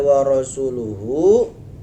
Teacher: Hu-nya dipanjangin seukuran 1 alif